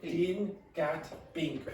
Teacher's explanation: If you don't aspirate, you might get din, gat, bink, which is not what you want.